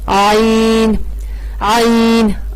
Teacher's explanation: آئین کا مخرج ہے وسط حلق، حلق کا درمیان. جو ہا کا مخرج ہے وہی آئین کا مخرج ہے.